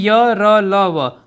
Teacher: तो य का तालु, र ल का वत्सर्य, व का दंतोष्ठ। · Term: अंतस व्यंजन